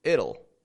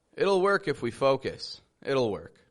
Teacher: We just add the dark L right after the T. This makes the T into a flap T, and we say it'll.